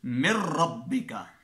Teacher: تو نون کو غنہ ہو رہا ہے، ہم نے غنہ نہیں کرنا یہاں پہ کیونکہ آگے را آ رہا ہے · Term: بلا غنہ